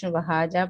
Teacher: ہم لوگ وہاجا پڑھ دیتے ہیں، شدہ ڈراپ ہو جاتی ہے اس طرح